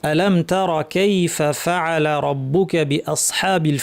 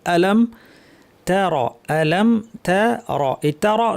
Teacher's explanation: তা শব্দটি পাতলা র ভারী